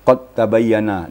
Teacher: Dal kepada ta jadi qalqala Dal itu hilang diqad tabayyana nah dalam bacaan qad tabayyana Dal itu tidak ada kedengaran dalam bacaan tapi dalam tulisan tetap